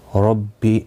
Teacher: را زبر کی وجہ سے پر پڑھا جائے گا. بی کو کھینچنا نہیں، تشدید والے حرف کو سختی کے ساتھ پڑھیں تاکہ تشدید ظاہر ہو.